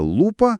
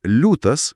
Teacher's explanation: žodžyje lūpa priebalsis L yra kietas, o žodyje liūtas minkštas L. Rašte tas minkštumas prieš užpakalinius balsus žymimas įterptint raidę I. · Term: priebalsių minkštinimas